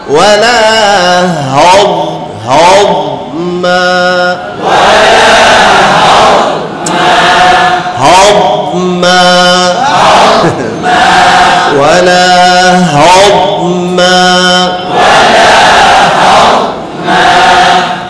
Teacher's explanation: দোয়াতকে সাকিন অবস্থায় খুব শক্ত হাতে ধরতে হবে, শক্তভাবে ধরে রাখতে হবে, কারণ এটা ছুটে যাওয়ার সম্ভাবনা বেশি থাকে, তাহলে কলকলা হয়ে যাবে